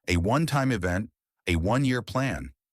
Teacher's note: These words begin with a vowel sound A or O, a one-time event, a one-year plan. In these cases, one starts with the W sound, a consonant sound